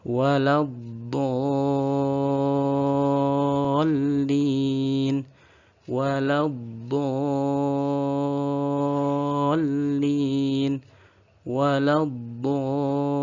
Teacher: mad lazim kilmi mutsaqqal yang panjangnya 3 alif atau 6 harokat. Juga setelahnya ada lam tasydid.